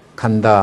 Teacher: 이거는 우리말 소리에서는 첫 소리를 할 때 가령 간다 할 때 뭐 간 할 때 이 소리는 무성음이에요. 성대 진동이 없습니다.